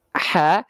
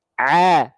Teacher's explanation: Cuman bedanya ha kecil dialirkan nafasnya karena dia ada sifat hams. Kalau ain dilafalkan tanpa aliran nafas. Ha, tahan nafasnya, a, keluarnya ain.